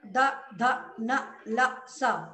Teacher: तो द ध न ल स दंता, यानी इसका उच्चारण स्थान क्या है, उत्पत्ति का स्थान दंत, यहाँ दांतों से टकराकर हवा बाहर निकल रही है, इसलिए इसको दंत दंत्य कहते हैं, दंत्य वर्ण।